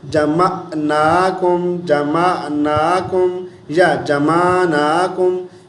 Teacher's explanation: جمعناکم، جمعناکم، یا جمعناکم، یا میم کو لمبا کر دیتے ہیں تو عین کی آواز نہیں نکالیں گے بلکہ حمزہ کی آواز نکال دیں گے، جمعناکم۔ تو جیسے ہم حمزہ پڑھیں گے تو معنی چینج ہو جائے گا، لیٹر چینج ہو گیا، یہ بہت بڑی غلطی ہے۔